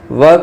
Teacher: व का उच्चारण स्थान दंत और ओष्ठ से होता है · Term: दंतोष्टम